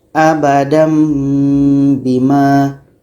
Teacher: Dibaca dengung 2 harakat.